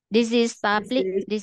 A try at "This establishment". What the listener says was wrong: Dizzy là nó không có ra đâu. Không có đi gì luôn. Ta là chữ sờ. Đúng rồi, this establishment. Thì mới đúng.